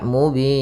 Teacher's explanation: Karena di sini menjadi sukun, maka ini kita namakan dengan mad arid disukun disebabkan karena adanya sukun arid, sukun yang timbul karena wakaf pada huruf nun. Maka panjangnya pada lafal bin itu boleh 2 harokat, boleh 4 harokat, dan boleh pula 6 harokat